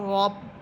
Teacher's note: এরপরের শব্দ র বা সবর রব। এখানে র হরফ মোটা করে পড়তে হবে, যেহেতু র হরফের উপরে আছে সবর।